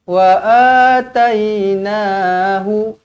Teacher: wa a dua harakat mad badal, ada alif